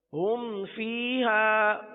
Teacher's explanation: با اور میم کے علاوہ کوئی بھی حرف آ جاتا ہے تو اظہار شفوی ہوتا ہے، لہذا یہاں پر گننا نہیں کریں گے